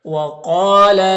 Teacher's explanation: القاف حروف مستعلیہ میں سے پر پڑھیں گے ، اور یہاں پر الف مدہ ایک الف کے برابر کھینچیں